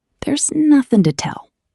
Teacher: The strongest word is nothing. Hit nothing hard. · We change the strong oo sound to a very short weak sound. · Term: stress